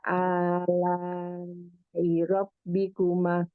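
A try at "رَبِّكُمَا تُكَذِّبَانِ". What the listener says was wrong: irobikuma tuh kaziban maknya kecepatan. Irobikuma tuh kaziban gitu. Jadi kalau salah, eh, salah bacanya salah satu, maksudnya irobikuma maknya ini kependekan, ntar pas di pengulangan Fabi Ayi yang berikutnya pun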